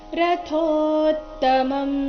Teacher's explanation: ಆಘಾತ ಬರಬೇಕು ಮುಂದೆ ತ್ವ ಎಂಬ ಸಂಯುಕ್ತ ಅಕ್ಷರ ಬಂದ ಕಾರಣ ರಥೋತ್ತಮಂ ರಥೋ ಥೋ ಮಹಾಪ್ರಾಣ ದೀರ್ಘ ಇದೆ ಅದರ ನಂತರ ತ ಕ್ಕೆ ತ ದ ಒತ್ತು ಬಂದಿದೆ ಸ್ವಲ್ಪ ಒತ್ತಿ ಹೇಳಬೇಕು